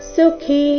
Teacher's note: ಸುಖಿ ಕಿ ಇಲ್ಲಿ ಮಹಾಪ್ರಾಣ ದೀರ್ಘ